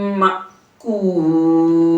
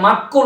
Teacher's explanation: অনেকে মাক্কুল বলে ফেলে, কিন্তু না, মাক্কুল না, শব্দটা হামজার মধ্যে ব্রেক হবে, বাতাসটা হামজার মধ্যে থেমে যাবে, থেমে যেয়ে পরে আবার কুল করবেন।